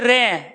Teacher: जिस वर्ण के उच्चारण करने में जीभ लुढ़कती हो तो उसको कहते हैं लुंठित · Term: लुंठित या परकंपित व्यंजन